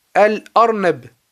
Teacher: Donc ici on prononce clairement le lam, al. Et ça c'est ce qu'on appelle al-huruf al-qamariya. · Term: lettres lunaires